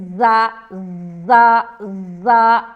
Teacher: زا کو تو بہت ہی سختی سے نکالیں گے، سٹی کی آواز اس میں بھی آتی ہے